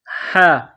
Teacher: گلے کے درمیان سے ہا کو نکالیں گے